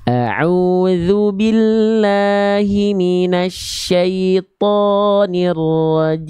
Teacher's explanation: Lalu yang kedua, to jangan kepanjangan. Huruf to di sana dibaca dengan kadar panjang 2 harokat.